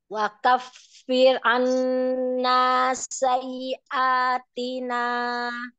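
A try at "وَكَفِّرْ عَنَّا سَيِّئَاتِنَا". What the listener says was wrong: Belum. Jadi roknya, roknya itu digetar lengket. Lengket, jangan lepas dulu. Itu ada sifat tawassut. Perhatikan tawassutnya.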